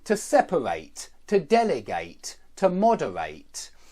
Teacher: the stress always goes on the anti-penultimate syllable and that means not the last syllable not the one before